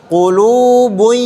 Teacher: hilang hilang tanwinnya yang kedua disertai dengan dengung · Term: Idgham bigunah